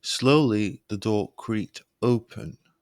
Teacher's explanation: your pitch lowering to create suspense slowly the door creaked open your voice dropping to sound mysterious